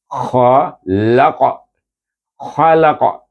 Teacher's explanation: kita sukunkan qaf itu dengan bacaan Qalqalah kubra